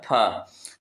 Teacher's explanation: फ का उच्चारण स्थान होता है बोलो ओष्ठ होता है।